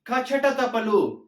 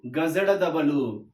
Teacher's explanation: కచట తబలు అనేటివి మనము కఠినంగా ఉచ్చరిస్తున్నాము గజడ దబలు అనేటివి మనం ఇక్కడ సరళంగా ఉచ్చరిస్తున్నాము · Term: పరుషాలు